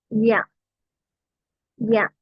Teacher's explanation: യ അതും നാവിന്റെ തുഞ്ചം കൊണ്ടല്ല നാവിന്റെ നടുഭാഗം മുകളിൽ തട്ട യ ഇത് തട്ടേണ്ട ആവശ്യമില്ല ഇനി മുകളിലേക്ക് പ്രസ്സ് യ യ ഓക്കേ